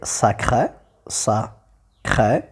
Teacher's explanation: vous avez un E qui est fermé parce que la syllabe, elle est ouverte. Pour les voyelles, ouvertes ou fermées, on a ouverte quand la syllabe est fermée, ça veut dire il ne se termine pas une consonne.